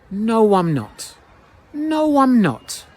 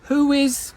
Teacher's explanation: Now, if this word ends in an o or an ooh sound and the next word begins with a vowel sound, we connect them by inserting a w sound. This is because your lips are going o or u o o and oo.